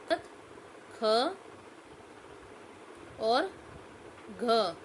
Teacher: बोलते समय ज्यादा प्रयत्न करना पड़ता है और वायु भी मुख से ज्यादा निकलती है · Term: महाप्राण व्यंजन